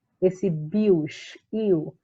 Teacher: Esse bios, iu, porque o i ele é uma semivogal e o o é uma vogal. E ele é ditongo porque na separação silábica eles permanecem juntos, certo?